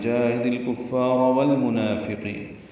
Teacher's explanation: منافقین میں نون کو 2 حرکات لمبا کرنا ہے